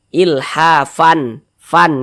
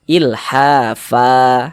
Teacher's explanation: Sehingganya menjadi mad iwad panjang 2 harokat. Sehingga cara membacanya, tanwinnya ini dirubah menjadi fathah.